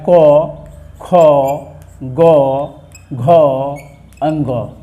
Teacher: कवर्ग का उच्चारण स्थान कंठ होता है